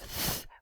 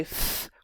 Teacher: the voiceless interdental fricative might be pronounced as the voiceless labiodental fricative, right? It's not just random sounds being substituted.